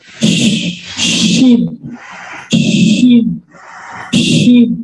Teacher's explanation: Jadi banyak udaranya menyebar ke tepi, ke tengah, ke samping, ke ujung, keluar juga.